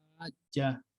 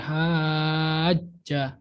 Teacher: Kalau aku contohkan mungkin kayak haja. Jadi panjang 6 harokat atau 6 ketukan, lalu ditekan karena ada tasdid, lalu dibaca huruf setelahnya. Jadi nggak langsung haja, nggak gitu, tapi haja, ada ditekannya. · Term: mad lazim musakol kalimi